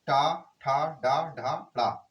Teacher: ट वर्ग का उच्चारण स्थल मूर्धन्य